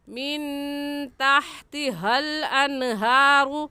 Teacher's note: ये हा हलक का आखिर जो सीने की तरफ है वहाँ से निकलती है। हा की जगह हा पढ़ना गलत होगा।